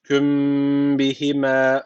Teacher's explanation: burada dudak ihfası var. Ne yapacağız? Bir elif miktarı dudaktan tutuyoruz.